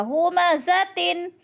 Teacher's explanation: دو زیر تنوین کے بعد آگے ہا حروف حلقی میں سے آ گیا اس لیے غنہ نہیں ہوگا